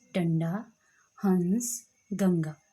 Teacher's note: ठीक है, जिनके ऊपर बिंदी लगी होती है और जब हम इनका उच्चारण करते हैं तो हमारी जो हवा है वो नाक से बाहर निकलती है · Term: अनुस्वार